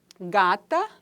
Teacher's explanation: o G, né, que é um som que é oclusivo, velar, vozeado, né? Se o K é desvozeado, nós temos aí o G, que é vozeado.